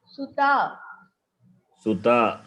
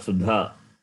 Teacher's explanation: When you say ta is first letter of Tavarga, it is dental. It is hard consonant. It is alpa pranas.